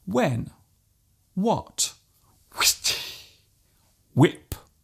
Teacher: There is actually no need to pronounce the h so strongly. Just let the sound leave your lips naturally.